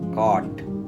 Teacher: ஆக்சுவலாக ஓ சவுண்டு போட்டிங்கன்னா அது கோட்டுன்னு இல்லை சொல்லியிருக்கணும். இது கோட்டு இல்லை, காட். ஆ சவுண்டு வர்றத கவனிங்க.